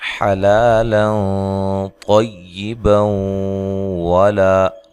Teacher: ملانے کی صورت میں یہاں نون تنوین کا ادغام مع الغنہ ہوگا